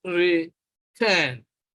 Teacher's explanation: You will notice that the stress is on the second syllable, on the syllable turn